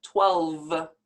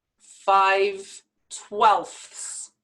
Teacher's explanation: fractions with a denominator of 12 are pronounced with an f sound and not a v sound because you already know when we say and spell 12 there's